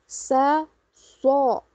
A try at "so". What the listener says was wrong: Enggak, bukan so. So. So ini enggak. Ini bibir ini enggak dimonyong. Bakso. Nah, ibu bilang bakso biasa. Bakso biasa. Nah, so gitu. So.